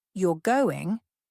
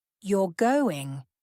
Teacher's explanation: with a rising intonation at the end of the sentence is a question